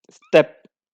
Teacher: For example, if we look at the first example, step, just try to speak step. The t is in the middle of the word, so it's not aspirated.